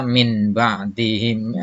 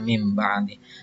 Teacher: Hurufnya cuma ada satu, yaitu ba, nun mati ketemu dengan ba atau tanwin ketemu dengan ba. Ya, maka membacanya nun mati atau tanwin digantikan dengan huruf mim. Contohnya, ini tulisannya min ba'dihim, dibacanya mim ba'dihim, ya. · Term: iklab